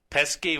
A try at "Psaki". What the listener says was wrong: I guess the P is silent. Psaki, you're talking about? I always pronounce the P, but I'm not hearing it in media platforms, so maybe it's silent.